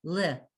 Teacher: at the beginning of the word it's the schwa which is sounded